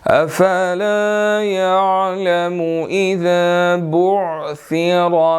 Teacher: را موٹا ہے، بعثرا کا، اس کے اوپر زبر ہے تو ہم نے اس کو موٹا پڑھنا ہے